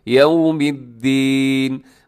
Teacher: اب یو کو خیال کیجیے گا کہ یہاں آپ کے ہونٹ گول ہو جائیں تاکہ یو نہ ہو جائے بلکہ یوم الدین، مالک یوم الدین، روز جزا کا.